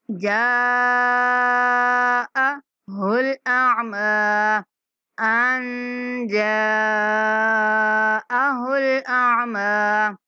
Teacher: یہاں پہ اخفا کریں گے، جا جو مد ہے اس کو 5 سیکنڈ تک لمبی کریں گے